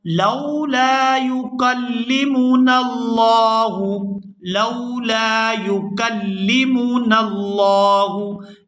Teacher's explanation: یہاں لفظ اللہ کے لام کو پورا ادا کریں گے اور کھینچ کر ادا کریں گے۔ لفظ اللہ کے لام سے پہلے اگر زبر ہو تو وہ پورا ادا ہوتا ہے، یہاں پر اس کو پورا ادا کریں گے۔